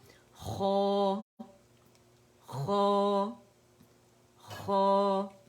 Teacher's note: خو کے لیے ہونٹ کبھی بھی گول نہیں ہوں گے, مخرج سے ادا ہوگا